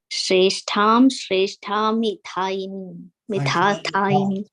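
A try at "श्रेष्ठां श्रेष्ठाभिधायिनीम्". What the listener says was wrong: It should not be tha. It should be sreshtham sreshtabhidhayinim. Abhidayinim.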